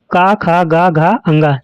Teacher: दूसरा नंबर है कंठ। इस वर्ग की सभी ध्वनियों का उच्चारण कंठ से होता है। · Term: कंठ वर्ग के वर्ण, कंठ वर्ग